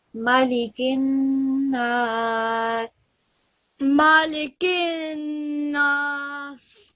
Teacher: 2 seconds for the noon, and then 2 seconds for the alif of elongation that comes right next to it.